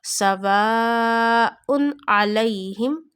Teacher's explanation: So after tanween there is a ayn which is pronounced from our throat. So that is why we will not take two pesh sound into the nose. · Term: halaki letter